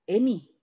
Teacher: 뒤에 있는 이가 앞에 있는 아이한테 영향을 줘서 아가 애가 되는 겁니다. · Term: 역행동화